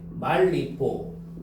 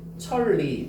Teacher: 니은이 다 리을로 바뀌어버려요. 그러니까 유음화.